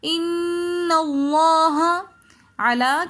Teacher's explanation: علا کے اوپر کھڑا زبر آ رہا ہے لام کے اوپر تو اس لیے ہم علا ایک الف کی مقدار کھینچ کر پڑھیں گے · ان کے اندر نون مشدد ہے تو نون مشدد کو ہمیشہ غننے کے ساتھ پڑھتے ہیں. لفظ اللہ سے پہلے زبر آ رہا ہے تو اس لیے ہم لفظ اللہ کو موٹا پڑھیں گے.